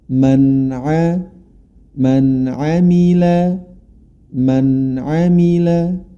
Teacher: nun sukun bertemu dengan Ain maka dibaca jelas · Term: zhar